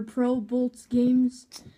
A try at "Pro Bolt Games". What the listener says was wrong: There's no S on Pro Bolts.